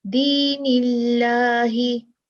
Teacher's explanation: अब ये जो नून है इसके नीचे जेर है, तो हम कैसे पढ़ेंगे लफ्जुल जलाला, दीनिल्लाही, बारीक पढ़ेंगे क्योंकि हमें अब जिस चीज की दलील मिल गई है, सबूत मिल गया है कि नून के नीचे जेर है, इसलिए अल्लाह सुब्हानहू व तआला के नाम का जो लाम है वो बारीक पढ़ा जाएगा